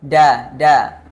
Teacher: gigi seri atas atau ujung lidahnya itu menyentuh langit-langit da da logat bahasa Indonesia huruf d-nya itu ujung lidah menyentuh langit-langit